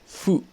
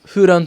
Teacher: mais c'est pas tout à fait un f c'est entre le f et le h